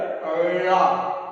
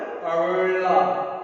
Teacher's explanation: அந்த அன்னத்தை நடுப்பகுதியை அப்படியே வருடி சொல்லணும். அப்படியே வருடுற மாதிரி நாக்க நல்லா உள்ள வளைக்க சொல்லும். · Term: சிறப்பு லகரம்